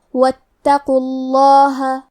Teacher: حرف تا پہ تشدید ہے تو ہمیں 2 حرف کے برابر تا کو پڑھنا ہے، اور حرف القاف کو موٹی آواز میں پڑھیں گے کیونکہ اس پہ پیش ہے، لہذا ہمیں لفظ الجلالہ مطلب کلمت اللہ کلام کو تفخیم سے مطلب موٹی آواز میں پڑھنا ہے۔ واتقوا اللہ، آخر میں ہا پہ زبر ہے تو ہمیں زبر کو ظاہر کرنا ہے۔ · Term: حمزۃ وصل